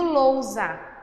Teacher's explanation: Esse S entre vogais vai ter o som de Z.